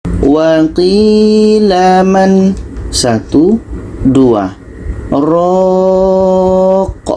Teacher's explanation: nun mati bertemu ro ini kan idgham bila ghunahah tidak berlaku di sini